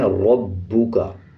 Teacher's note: آگے دیکھیں ربو کا، جیسے پچھلے الفاظ میں بتایا کہ را کے اوپر زبر یا پیش آ جائے تو را کو پر پڑھا جاتا ہے، یعنی موٹا پڑھا جائے گا۔ اسی طرح با کے اوپر شد ہے، شد کا مطلب ہے جب کسی الفاظ کے اوپر شد آ جائے اس الفاظ کو مضبوطی کے ساتھ ادا کیا جائے اور پچھلے الفاظ کے ساتھ ملا کے پڑھا جائے۔